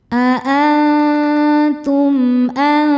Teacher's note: Berikutnya ada hukum izhar syafawi. Karena mim sukun tidak menghadapi mim ataupun huruf ba. Maka cara bacanya mim sukun dibaca dengan jelas.